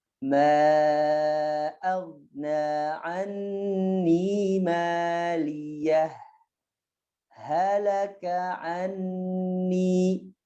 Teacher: riwayat hafaznya itu dijelaskan ya, disaktah kemudian dijelaskan, tidak diidghamkan ya